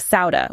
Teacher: It's a deep, heavy S sound. Think of it as a strong, forceful whisper. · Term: Swad